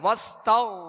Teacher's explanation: آگے غائن ہے وستغ تو غائن کو پر پڑھیں گے، حروف مستعلیہ میں سے ہے. ان تمام باتوں کا خیال رکھتے ہوئے، جیسے انہو کان توابا تو واو پر تشدید ہے، توابا.